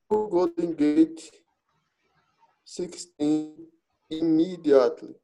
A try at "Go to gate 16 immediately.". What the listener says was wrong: só corrigir essa pronúncia, meu brother. Go to gate. Não golden gate, ok? Go to gate 16.